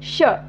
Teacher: हा श सुद्धा काय आहे घर्षक आहे आणि महाप्राण आहे तो काय आहे मग आपण महाप्राण घर्षक इथ लिहिलं आणि श